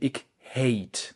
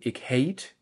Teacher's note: ich hate mit einem gedachten EY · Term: Diphthonge